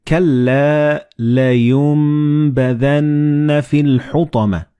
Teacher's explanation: the noon and ba, they will be assimilated together and you will pronounce them as meme